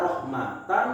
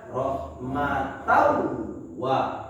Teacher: Bunyi n-nya kita lebur ke huruf wa. Kita nggak baca rahmatan, tapi kita baca rahmatau wa. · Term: Idgham